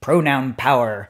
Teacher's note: you have the alliteration you have the strong plosive the per sound